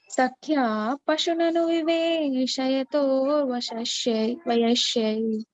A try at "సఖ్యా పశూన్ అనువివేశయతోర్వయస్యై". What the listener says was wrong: వయస్య అక్కడ శ్యా మాతాజీ. వయస్య. సఖ్య పశూన్ పశువుని దగ్గర ఫాస్ట్ అవుతున్నారు మాతాజీ, కొంచెం స్లో అవ్వండి సార్. సఖ్య పశూన్ అనువివేశయతోర్వయస్యై. సఖ్య పశూన్ అనువివేశయతోర్వయస్యై. పశువును అనువివేశయోర్.